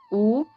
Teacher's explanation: ചുണ്ടിന്റെ സഹായത്തോടുകൂടി ഉച്ചരിക്കുന്നതാണ് ഊ എന്നുള്ളത് നമുക്കത് അങ്ങനെ ചുണ്ടിന്റെ സഹായം ഇല്ലാതെ ഉച്ചരിക്കാൻ പറ്റില്ല